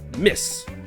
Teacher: l'important c'est que c'est la syllabe miss qui est accentuée. Miss. Et ensuite, les deux autres syllabes ne sont pas accentuées.